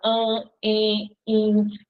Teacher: As vogais no meio da palavra, diante de M e de N, vão ficar com o som nasal.